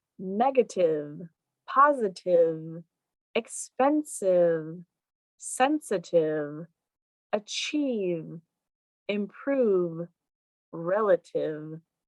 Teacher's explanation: i held out that v sound negative just a little bit longer so i could really feel the buzz on my lips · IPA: /v/